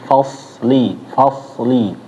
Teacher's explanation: Soalnya jangan sampai kayak sin ya. Lebih tebelin lagi.